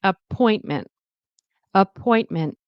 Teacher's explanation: Stress on the point.